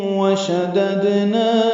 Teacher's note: وشددنا میں دال ساکن پہ قلقلہ ہے